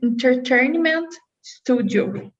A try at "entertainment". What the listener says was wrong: Entertainment's already better. That's already better.